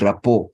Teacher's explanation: been integrated into the sound that brings out the o sound the T at the end is silent we eliminate it or we remove it the pronunciation of that word does not change